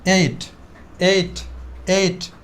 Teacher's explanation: আমরা প্রিভিয়াস টাইমে এটাকে টি বলতাম, এখন থেকে কি বলি? ঠি বলি, ঠি।